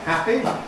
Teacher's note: So we have a moment during which the air cannot escape at all. That's why in the middle of a word like happy, there is a moment of complete silence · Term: complete closure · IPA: ˈhæpi, [ˈhæpi]